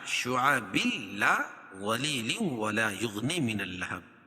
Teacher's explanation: تو ادغام بلا غنہ ہوگا تو اس میں غنہ نہیں ہوگا